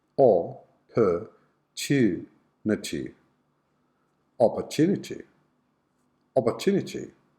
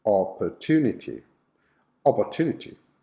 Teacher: the schwa is on the second and the fourth syllables.